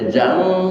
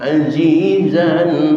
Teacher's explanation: Izhar artinya jelas. Maka jelaskan suara tanwinnya zan. Jangan dibaca zang dengan ikhfa atau jangan dibaca zam dengan idgham.